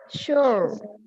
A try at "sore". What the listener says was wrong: That kind of sounds like when you say this. When you say this, it sounds like shore. Okay, this is shore, and the other one is sore. Sore.